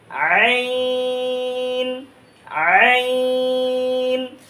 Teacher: গলার মধ্যখান থেকে আইনও আমরা উচ্চারণ করব এই যে এক স্থান থেকে কিন্তু আইনের আওয়াজ একটু ভিন্ন হবে